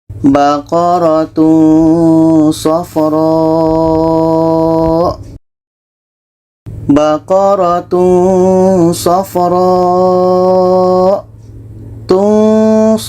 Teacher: ini ada tanwin bertemu ini Ikfa Hakiki kita baca baqaratunofro Tun ketika kita sebut tanwin kita sudah merasakan huruf SH